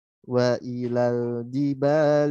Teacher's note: hati-hati huruf lam dia mengalir suaranya ketika sukun